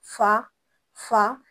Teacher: जब हम फा पढ़ते हैं तो हमारे होंठों से जो सांस की आवाज़ बाहर निकलती है ये सिफत हम्स कहलाती है।